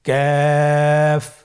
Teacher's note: কাফের মাখরাজ হলো জিহ্বার গোড়া থেকে একটু আগে বাড়িয়ে তার বরাবর উপরে তালের সঙ্গে লাগিয়ে উচ্চারিত হয়।